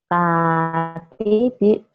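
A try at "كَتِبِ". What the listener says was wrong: Kaknya kurang mulutnya kurang tetek ya. Kayak hatibi kayak gitu. Kakak, kiki, kuku.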